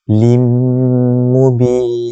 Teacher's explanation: Perhatikan pada lim, di situ tanwin kasratain bertemu dengan huruf mim, maka hukumnya idgham bi gunnah. Cara bacaan dia kena dengung 2 harakat.